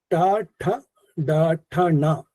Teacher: മൂർധന്യ വ്യഞ്ജനങ്ങൾ എന്ന് ഉദ്ദേശിച്ചാൽ നാവ് മുകളിലേക്ക് വളച്ച് ഉച്ചരിക്കുന്ന വ്യഞ്ജനാക്ഷരങ്ങളാണ്